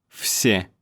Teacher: V is hard to voice because of this S next to it. That's why it sounds like F.